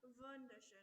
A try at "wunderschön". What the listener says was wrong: Yeah, so it's a wu sound, not a v sound. Wunderschön.